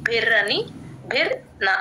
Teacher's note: భి కి ర ని జాయిన్ చేయాలి భిర్న ర కి పొల్లు పెడతాం అండి భిర్ అని భిర్ న అంతే భిన్నర్ణస బద్యతే బ కి ఇక్కడ యూజువల్